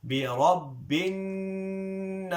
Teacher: So I'm holding on to the noon here for 2 counts. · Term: غنة